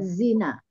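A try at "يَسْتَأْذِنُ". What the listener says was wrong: Yastaf'ilu, bukan ila, tapi ilu.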